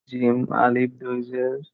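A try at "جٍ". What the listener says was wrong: না, আলিফ নাই, জিম 2 জের জিন। জেরের সময় আসে না তো, এটা ওইটা জবরের সাথেই আর কি সংশ্লিষ্ট। জেরের সাথে তো আসার ওয়ে নাই আলিফ।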